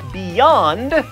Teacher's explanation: when you say words like beyond you actually use your tongue up there the roof of the mouth for the y so that is not a vowel it's a consonant in that